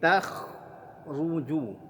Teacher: ra-nya tebal, kha-nya tebal, jimnya huruf tipis.